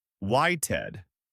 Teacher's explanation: In waited, the verb wait ends in a T sound, so we again add that ID syllable.